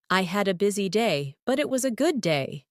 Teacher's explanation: Notice how your voice rises slightly at busy day and falls softly at good day.